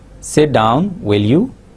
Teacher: So will you will be said with the rising tone.